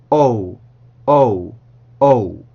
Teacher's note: 여기에서는 O 반드시 이중모음이기 때문에 시작 입술 모양과 끝 입술 모양이 같으면 안 돼요. 시작과 끝은 다른 겁니다.